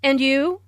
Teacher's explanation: Notice the rising intonation on and you.